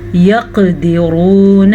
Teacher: क़ाफ के ऊपर कलकला हो रहा है